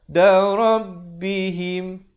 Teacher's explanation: izhar syafawi, sempurnakan saja bunyi mimnya.